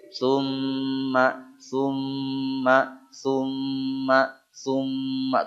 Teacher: kadar dia disebutnya dua harakat boleh atau lebih populer tiga ketukan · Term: gunah mim tasdid